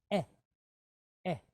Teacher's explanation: Chatef segol. So for all intents and purposes, a quick E.